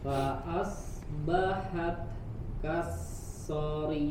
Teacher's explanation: di huruf ta-nya ada hams ya, ada hams keluar kan udara, anginnya. Fa'asbahat ya, ada angin keluar sedikit.